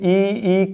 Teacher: ई और ई को तालु से बोला जाता है।